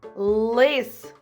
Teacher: перший звук л це твердий приголосний позначається однією рисочкою